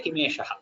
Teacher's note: since we are stopping at the end of third pada, you have to give the Visarga